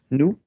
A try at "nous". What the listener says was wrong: Don't stab me. Nous. Go longer.